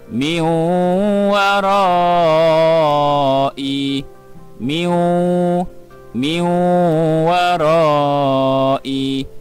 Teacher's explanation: kita kena baca dengan memasukkan huruf nun ke dalam huruf wow